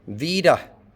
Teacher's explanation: Vida with a schwa in the second syllable.